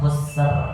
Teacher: Ro yang sukun, ro-nya tebal juga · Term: ro tebal